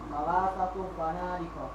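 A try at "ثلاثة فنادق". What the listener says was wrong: Sahih.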